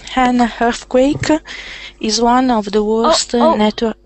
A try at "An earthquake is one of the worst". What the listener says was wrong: Okay, when you're saying it's not hun. So it will sound un. So I'm hearing hun. I want to hear un. So try not to have that huh first.